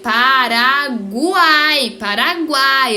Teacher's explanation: a gente fala uai tudo junto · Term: tritongo